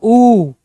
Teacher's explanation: जैसे मैंने ऊ का प्रयोग किया मेरे होठ गोल गोल घूमे